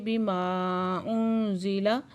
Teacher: ماں پہ مد منفصل ہے، 4 سے 5 حرکت کھینچ کے پڑھیں گے، اور نون ساکن کے بعد زا ہے، یہاں پہ اکفا ہو رہا ہے۔